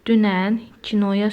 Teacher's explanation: Dünən kinoya sözlərindəki Ü və O dodaqlanan sahitlərdir.